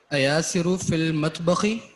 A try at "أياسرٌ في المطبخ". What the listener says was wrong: ایاسرن تنوین